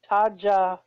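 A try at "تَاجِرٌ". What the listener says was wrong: Tajirun. Ji. Jim kasra ji. Haza tajirun.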